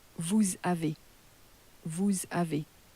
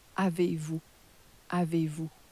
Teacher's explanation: that S is crashed into the A that follows · on the end of you, you're no longer pronouncing the S.